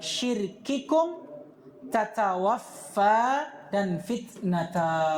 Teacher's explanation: Perhatikanlah syiddahnya kaf, begitu pula ta.